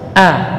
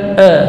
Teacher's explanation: Kemudian hamzah huruf syiddah dan jahar, a, ya, juga semuanya di sini huruf tipis. Jadi posisi lidahnya itu istifal, istifal sufla, di bawah, a, gitu, bukan e. Kalau e ini masih terkatung, dia di tengah, ya, bukan di bawah, bukan juga di atas.